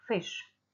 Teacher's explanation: So, if you take the English word fish, which is pronounced with an F sound, produced with the lips and the teeth, so it's a labiodental sound, and it's fricative because it's got continuous F flow.